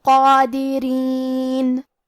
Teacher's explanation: حرد قادرین، یہاں حرف القاف ہے اور اس پہ کھڑا زبر ہے تو یہاں مد الف ہوا، لہذا ہمیں قاف کو اور مد الف کو دونوں کو بھاری آواز میں پڑھنا ہے